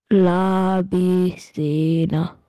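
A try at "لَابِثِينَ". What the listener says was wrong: No, you are stretching the B. You are saying bi sina. Whereas it is bi sina. Not bi sina. La bi sina.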